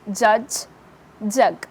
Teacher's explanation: the front part of the tongue, including the tip and the blade, is raised towards the hard palate. That is, the front part, the entire front part of the tongue including the tip of the tongue and the blade of the tongue is raised towards the hard palate. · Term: palato-alveolar sounds